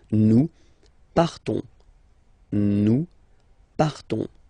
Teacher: So classic ending ONS, you don't pronounce the S, you just have this on sound nasal